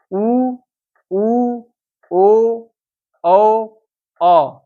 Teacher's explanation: यहाँ पे आपका ओठ लगभग वृत्त बना दे रहा है, बोलते समय ओठ गोला हो जा रहा है, इसलिए वृत्तामुखी कहा जा रहा है।